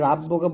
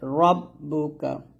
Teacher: এখানে রাব্বুকা বলবেন না, রটা মোটা করে রব্বুকা